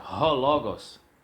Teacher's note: No primeiro exemplo, a aspiração está para dentro. Essa aspiração para dentro, antes da palavra logos, então não é o logos, é rologos.